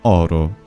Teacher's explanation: Ditto for, say, the word aurum, Latin for gold. This becomes Italian oro, and that first O is open.